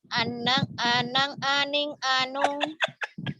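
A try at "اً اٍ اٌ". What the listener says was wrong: Anang mah Mas Asanti di Jember. Jangan Anang. Kenapa ada G-nya? Anan. Anan. Anin. Gitu jangan Anang. Anang mah ada di Jember itu si Anang.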